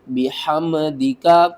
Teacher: میم کے اوپر آپ نے غنہ نہیں کرنا، بحمدک نہیں پڑھنا.